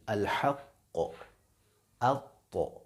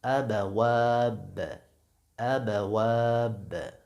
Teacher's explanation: با، اس میں آواز پیش کی طرف مائل نہیں ہوگی، مثلا ابواب، ابواب۔